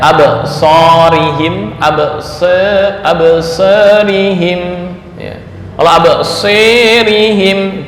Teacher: imalah Sugra keadaan antara fathah dan imalah Kubro dengan ukuran ya sekitar 30 40% 30 40 derajat ya atau